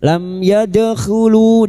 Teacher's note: dal sukun yang mati asli di tengah kalimat qalqalah sugro. Yadkhulu lu diikuti wau sukun dua harakat.